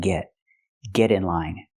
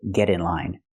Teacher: We hear the pronunciation of t change to a fast d because it's between vowels.